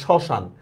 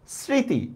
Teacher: শব্দের শুরুতে মফলার উচ্চারণ হয় না। দেখো শ্মশান, দেখেন মফলা আছে কিন্তু মফলার উচ্চারণ হচ্ছে না, এই জন্য দেখেন এখানে একটা চন্দ্রবিন্দু দিছি আমরা।